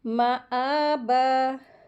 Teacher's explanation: अगला वर्ड देखें, माआबा, मीम के ऊपर ज़बर लगी है, इसको जल्दी पढ़ेंगे, और मीम के साथ अलिफ आई है, उसके ऊपर खड़ी ज़बर है, तो इसको 2 हरकत खींचेंगे